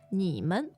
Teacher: So third tone 你 plus a neutral tone.